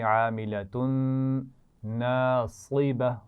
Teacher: آخر میں تنوین کے بعد نون آ رہا ہے تو ملائیں گے بھی اور غنہ بھی کریں گے